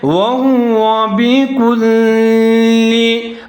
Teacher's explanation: ہا کے اوپر پیش ہے، اس کو موٹا پڑھنا ہے